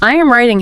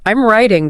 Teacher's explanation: I am writing has 3 distinct beats. It's very staccato. I'm writing just flows. It's like the difference between walking down a set of stairs and sliding down a slide. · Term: rhythm